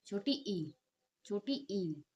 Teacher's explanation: जीवा और मुख विवर के ऊपरी भाग के बीच कम से कम दूरी रहती है। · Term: संवृत स्वर